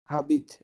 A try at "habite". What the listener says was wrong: না হাবিত না, আশ তো সাইলেন্ট বলেছিলাম, তাই না, বলেছিলাম যে আশ সবসময় সাইলেন্ট হবে, তাহলে পরবর্তী এটা থেকে করতে হবে। আবিত, আবিত,